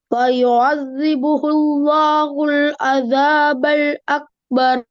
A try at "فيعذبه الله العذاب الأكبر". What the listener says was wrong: ஐன் வருது இல்ல. فيعذبه الله العذاب الأكبر. அஸாபல் அக்பர். ஐனை மலிகை எடுத்து அந்த பகுதி மட்டும் மோதுங்க. அஸாபல் அக்பர்.